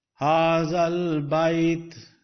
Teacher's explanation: Both the alifs of haza and al bait, both the alifs are omitted in a sense, not giving any sound, even the sound of a jazm.